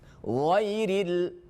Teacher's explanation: Kha menjadi gha dan gha menjadi kha karena saking dekatnya makhraj.